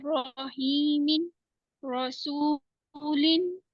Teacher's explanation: अगर रा के ऊपर जबर होगी तो हम इसको मोटा पढ़ेंगे